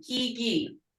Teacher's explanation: depending on who you're listening to it sounds more like the K or the G sound